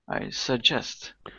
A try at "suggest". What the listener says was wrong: So the stress is on the second syllable. Not suggest, but suggest.